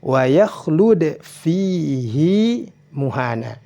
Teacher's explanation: Hi-nya boleh dibaca panjang, panjangnya dua harokat